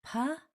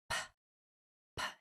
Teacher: Only air, no voice. So the sound for P is not pa, it's just p, p. It's a popping of air only.